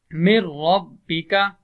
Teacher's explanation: اب ہم نے نون تو موجود ہے، اصل میں تھا من ربک، ہم نون کی آواز کو ہم نے ختم کیا اور میم کو ہم نے را کے ساتھ ملا دیا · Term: بغیر غنہ